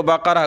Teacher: گولتا جو ہے وقف میں ہا بن جاتی ہے